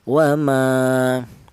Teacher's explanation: Alasannya ada alif yang didahului huruf yang berharakat fathah panjangnya yaitu satu alif atau dua harakat atau dua ketukan. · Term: mad thobi'i